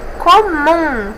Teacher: Mum é a sílaba mais forte, então é oxítona.